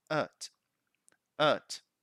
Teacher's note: And the weak form, you can see the schwa here, at.